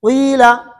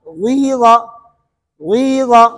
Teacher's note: پڑھیں گے زیر لیکن ہونٹوں کو گول کر کے پیش کی طرف اشارہ کریں گے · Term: اشمام